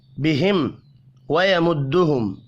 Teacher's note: दो मीम साकिन है, दोनों पर इज़हार शफ़ी होगा, गुन्ना नहीं होगा।